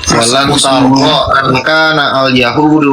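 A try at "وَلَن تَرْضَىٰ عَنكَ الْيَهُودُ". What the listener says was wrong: Nggak ada angkana di situ, pulpit angkal Yahudu nggak ada angkana. Angkal Yahudu.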